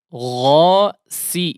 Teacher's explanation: Sin di situ sin tipis tajam. Ghasi kemudian huruf qafnya diperjelas di situ ya.